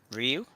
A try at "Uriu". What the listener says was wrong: Uriu, three syllables.